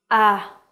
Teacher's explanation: So your tongue is very low in your mouth. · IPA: /æ/